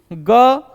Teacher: ग का उच्चारण स्थान दोस्तों कहां से होता है कंठ से होता है